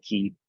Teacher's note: makes a really breathy H sound, like in loch